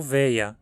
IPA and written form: veɪ̯ɐ (wäär)